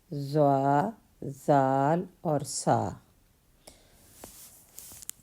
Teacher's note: تو نرم حروف جو نرمی سے ادا ہوتے ہیں وہ ضا، ذال اور سا۔ زبان کا سرا اور اوپر کے دانتوں کے اندرونی کنارے سے ادا ہوتے ہیں · زبان کا سرا اور اوپر کے دانتوں کے اندرونی کنارے سے ادا ہوتے ہیں ضا، ذال اور سا۔ یہ نرم ادا ہوتے ہیں، ان میں سیٹی کی آواز نہیں آتی